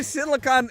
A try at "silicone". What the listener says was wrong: Especially since you're saying silicon and not silicone. So yes, very big difference.